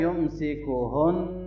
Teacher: اس نون مشدد پہ غنہ کریں گے